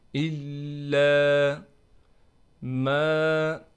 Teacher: میم کے بعد الف ہونے کی وجہ سے میم کو بھی کھینچیں گے